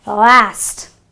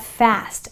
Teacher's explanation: the first word is last so the pronunciation is an a not an ah